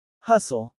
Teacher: Hustle. The first syllable is stressed.